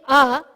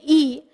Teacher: the mother the sound is coming directly from the kanta but when we're saying e we're moving the the tongue upward a little upward we're not touching it to any place in the mouth